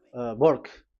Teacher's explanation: the English of Indian is the W has changed into B